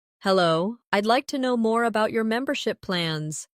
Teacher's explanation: Notice the stress on membership.